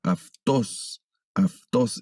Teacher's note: sonido de la ipsilon pasa a ser como de F, como el sonido de F